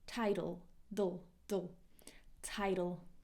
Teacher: a flap T sounds like D